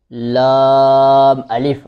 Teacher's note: زبان کی نوک اور کروٹ جو دونوں سائیڈیں ہیں زبان کی، اس کا کچھ حصہ جو نوک کے ساتھ متصل ہے وہ اوپر والے دانتوں کے مسوڑوں سے لگے تو یہ لفظ ادا ہوتا ہے۔ · یہ خیال رہے کہ یہ لام موٹا نہیں ہوتا، یہ موٹے حروف میں شامل نہیں ہے